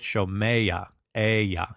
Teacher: And so we get here the furtive patach for the vocalic glide, and we get shomeya, aya. You get that vocalic glide into the ah sound of the guttural.